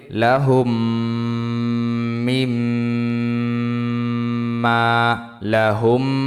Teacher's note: এখানে গুণ হবে মিম সাকিনের বামে মিম ঈদগমে মিসলাইন